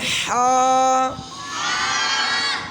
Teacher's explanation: درمیانے حلق سے نکالیے، ہا، اور نیچے والا حصہ جو سینے کے قریب ہے حلق کا، اس سے نکالیے ہا، ہا۔